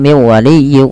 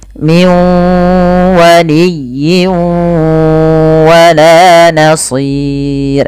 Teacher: dimasukkan kemudian sambil ditahan dengan gunah bukan hanya sekedar masuk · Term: Idgham